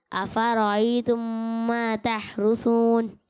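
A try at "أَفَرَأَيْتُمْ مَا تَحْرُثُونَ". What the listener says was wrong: अच्छी कोशिश की आपने भी, लेकिन बेटा यहाँ देखें लिखा हुआ है हमजा। इसे पढ़ेंगे आई तुम, ये आई तुम पढ़ेंगे तो गलत हो जाएगा, ठीक है? और दूसरी बात ये कि सा में सीटी की आवाज़ नहीं आएगी, ठीक है? तो सा के लिए आपको प्रैक्टिस करनी पड़ेगी, आप तकरार के साथ पढ़ें, इंशाल्लाह ये जो गलती है आपकी ठीक हो जाएगी।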